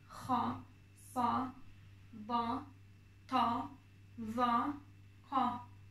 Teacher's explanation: Dediğim gibi bunların üzerine fetha dediğimiz E sesini veren hareke geldiği zaman bunları kalın A şeklinde okuyacaksınız